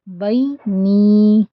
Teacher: نون یا زیر نی 2 کاؤنٹ اسٹریچ کریں گے